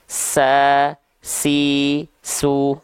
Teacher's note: huruf Sin ketika dia punya sifat hams yaitu mengalir nafas